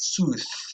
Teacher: some varieties of English also admit sooth as a voiceless interdental fricative